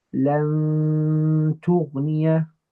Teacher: I'm going to do ikhfa of that tongue component of my noon, and I'm only going to use my nose for two harakat to say لن تغني.